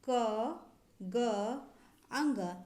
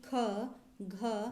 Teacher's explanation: क ग अंग। ये सारे अल्प प्राण के अंतर्गत आएंगे, जबकि ख घ ये सारे महाप्राण के अंतर्गत आएंगे